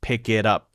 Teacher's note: even sounds that are not voiced, like t, get turned into voiced sounds like d, right? Not all unvoiced sounds, but t turns into d often so that the voice doesn't have to break.